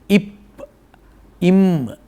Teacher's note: அதே போல் இதழ் ஒட்டி பிறக்கிற எழுத்து உண்டு. இப் இம் இந்த இரண்டும் இதழ் ஒட்டி பிறக்கும்